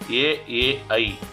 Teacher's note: ಅಂದ್ರೆ ನಮಗೆ ಕಂಠ ಮತ್ತು ದವಡೆ ಎರಡೂ ಈ ಅಂಗಗಳಿಂದ ಈ ಅಕ್ಷರಗಳು ಹುಟ್ಟುತ್ತೆ. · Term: ಕಂಠ ತಾಲವ್ಯ